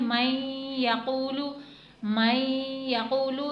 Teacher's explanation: यहाँ पर क्योंकि नून साकिन के बाद या आ रहा है तो यहाँ पर हम इदगाम माल गुन्ना करेंगे